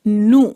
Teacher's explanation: نون، اس پر ہے پیش یعنی کہ ضمہ، تو ہونٹوں کو گول کریں گے، نو، اور ساتھ ہی پیش کے بعد آ رہا ہے واو تو تھوڑا سا لمبا بھی کریں گے، نو۔